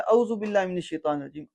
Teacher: عام طور پہ عین کو بیچ میں غائب کر دیا جاتا ہے